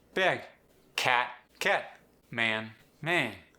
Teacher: The short A sound shifts upward.